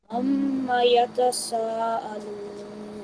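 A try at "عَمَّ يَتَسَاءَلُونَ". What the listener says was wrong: What about the stretching of sa for 4 seconds? Stretch it more.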